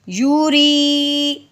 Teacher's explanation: رو کے نیچے زیر ہے، اس رو کو باریک کریں گے. رو یا زیر ری، یوری.